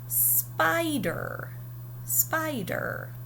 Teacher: spy is louder longer higher pitched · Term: accenting syllables